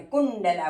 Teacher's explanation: ટ વર્ગનો અનુનાસિક ણ છે અને એટલા માટે કુંડલા બોલવાનું.